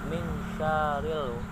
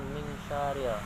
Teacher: Dalam surat An-Nas, khususnya di ayat yang keempat, di situ terdapat satu hukum ikhfa yang dimana nun mati bertemu dengan huruf sya, maka dibaca wajib dengung atau mengambang, yaitu min syarril, bukan min syarril.